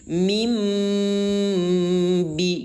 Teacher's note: Yang diganti adalah bunyi nun sukun atau nun yang baris mati menjadi suara mim. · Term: iqlab